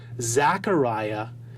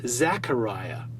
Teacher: effectively turning the A sound of names like Zachariah, as found recorded in the Septuagint, into an E sound we now see recorded as Zechariah